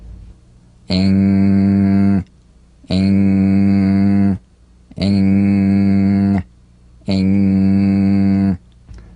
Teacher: practice the final NG with no drum beat as the tongue leaves the soft palate at the end of the word.